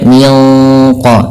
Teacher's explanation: ketika kita melafalkan juga ikhfa yang kepada huruf qaf, itu ditebalkan menyesuaikan dengan sifat huruf qafnya yang tebal. Maka tidak baca min qablihim, tapi dia min qa. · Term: ikhfa hakiki